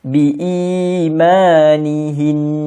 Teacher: dengung nih tempatnya adalah di hidung jadi kita kena masukkan kedalam hidung betul-betul